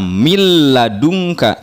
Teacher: Untuk lam, milladunka, nun sukun bertemu dengan lam, bunyi nunnya hilang, langsung ke lam, milladunka, tidak min ladunka, ya. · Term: idgham bila gunah